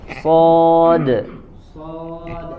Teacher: huruf sod tadi termasuk huruf isti'la yang memiliki sifat itbaq. Jadi ketebalannya harus lebih tebal.